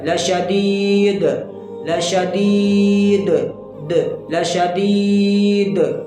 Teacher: لفظ کا آخری حرف دال ہے، وقف کی وجہ سے کیا ہو رہا ہے؟ ساکن ہو رہا ہے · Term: قلقلہ کبرا